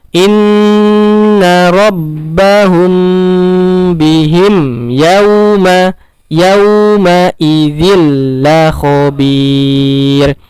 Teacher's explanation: Sedangkan bihim, mim ketemu ya, tidak ditahan. Langsung. Inna rabbahum bihim yawma idzil la khabir.